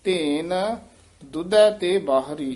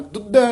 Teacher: ਜਾਨੀ ਦਰਮਿਆਨਾ ਜਿਹਾ ਬੋਲਣਾ ਦੁੱਧੈ ਨਹੀਂ ਕਹਿ ਦਿੰਨਾ ਜਿਆਦਾ ਕਸ ਕੇ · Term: ਯਮਕ